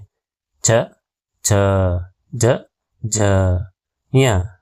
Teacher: ಈ ಅಕ್ಷರಗಳು ತಾಲುವಿನ ಸಹಾಯದಿಂದ, ತಾಲುವು ಅಂದರೆ ನಾಲಿಗೆಯು ದವಡೆಗೆ ತಾಗುವುದರಿಂದ ಹುಟ್ಟುತ್ತವೆ. ಹಾಗಾಗಿ ಇವುಗಳನ್ನು ತಾಲವ್ಯಾಕ್ಷರಗಳು ಎನ್ನುವರು.